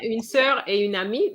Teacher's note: And une amie, this is compulsory liaison.